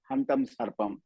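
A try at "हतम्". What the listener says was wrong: Hatam eva. Nakaram nasti.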